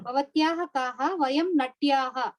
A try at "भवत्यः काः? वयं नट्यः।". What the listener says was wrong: with bhavatyah also there is no dirgham. You are saying bhavatyah. No. there also dirgham नास्ति.